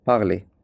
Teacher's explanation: R at the end we don't say. If I write it like this, it is parle.